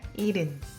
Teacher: H is very soft. Almost you don't hear it. So it sounds more like 일흔.